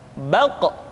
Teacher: Diucapkan dengan suara yang tebal dan dalam posisi sukun, maka terdengar pantulan suara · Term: huruf qa